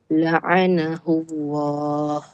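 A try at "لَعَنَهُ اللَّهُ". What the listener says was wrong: Masya-Allah. Bagus.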